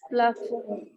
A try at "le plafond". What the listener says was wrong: Yes, le plafond. D is not to be pronounced.